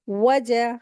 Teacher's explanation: वाव भी हुरूफ़ शफ़तान है, होठों को गोल करेंगे तो ये वाव अदा होगी।